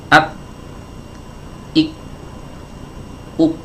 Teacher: huruf kaf ketika suaranya tertahan, yaitu pangkal lidah diangkat sampai menempel ke langit-langit.